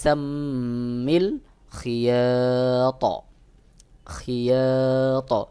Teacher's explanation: ত এর উচ্চারণের মধ্যেও জবরের মত করে হালকা উচ্চারণ করতে হবে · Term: বড় কলকলা